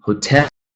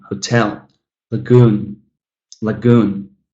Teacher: You can clearly hear that stress falling on the second syllable, even though it's a 2-syllable noun.